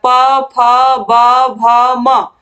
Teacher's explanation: तो ये जो प वर्ग के वर्ण होते हैं इनका उच्चारण होता है ओष्ठ से।